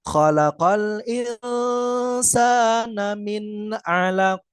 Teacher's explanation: Jadi, nun sukunnya dibaca jelas apabila bertemu dengan huruf ain juga.